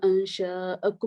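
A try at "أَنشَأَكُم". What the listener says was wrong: اور اس کو بھی دیکھیے انشاءکم, مد نہیں ہے نا یہاں پر, انشاءکم. ٹھیک ہے, تو آپ نے یہاں مد اصلی بھی نہیں ہو رہی بلکہ یہ ہے انشاءکم.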